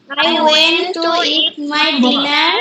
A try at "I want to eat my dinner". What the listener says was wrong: ওয়েন্ট হবে না, উচ্চারণটা ওয়ান্ট বলো, আই ওয়ান্ট টু বলো,